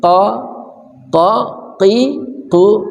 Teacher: qo dari pangkal lidah kita